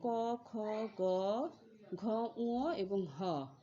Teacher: যেমন প্রথমে রয়েছে ক, খ, গ, ঘ, ঙ এবং হ। এই ধ্বনিগুলো উচ্চারণ স্থান হচ্ছে কণ্ঠ বা জিহ্বা-মূল, যার কারণে এদের নামকরণ করা হয়েছে কণ্ঠ বা জিহ্বা-মূলীয় ধ্বনি।